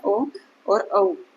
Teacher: तो ये दोनों हमारे क्या कहलाते हैं, ये दोनों हमारे कहलाते हैं कंठ और ओष्ठ से उच्चारित होने वाले वर्ण, कंठोष्ठ। कंठ से भी ये उच्चारित किए जाते हैं और ओष्ठ से भी ये उच्चारित किए जाते हैं